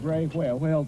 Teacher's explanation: pronouncing wh as “hw” is one of the classic distinctive features of an old-school Pacific Northwest accent